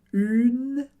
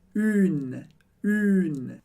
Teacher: Perceba que tem o som do U, do biquinho, bem forte. Une. Mas eu não falo o E do final.